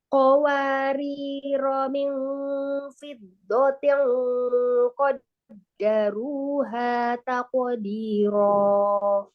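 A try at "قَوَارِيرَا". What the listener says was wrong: Jadi kalau baca huruf waw, sempurnakan monyongnya ya. Contoh tadi qawa, tidak qawa, wawa ya. Terus tadi iya di situ ya qawariro.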